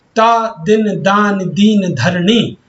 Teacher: यहाँ द ना धा वर्णों की जो आवृत्ति हुई है वह आपकी दंतव्य समूह से है, क्योंकि यह उच्चारण करते समय जीभ दांतों को छूती है।